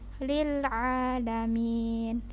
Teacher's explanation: huruf ain letaknya di tengah tenggorokan, panjangnya kita panjangkan 2 harokat, jadi bukan a biasa